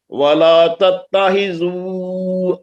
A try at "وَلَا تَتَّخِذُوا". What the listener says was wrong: تتہی نہیں، خا کو صاف کرے، وَلَا تَتَّخِذُوا خا